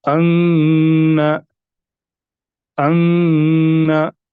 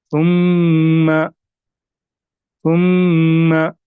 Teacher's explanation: मीम मुशद्दद और नून मुशद्दद, इनमें हमें गुन्ना करना है, यानी नाक में से आवाज निकलनी चाहिए।